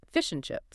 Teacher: But in the middle of a sentence, the a and the d are usually abandoned entirely. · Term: weak forms